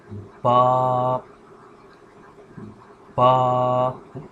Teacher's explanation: So from this first part we say the letter ba, and as you can see the definition here, pronounced from the wet part of both lips. The ba is articulated by closing the two lips together, but a stronger closing than the meem.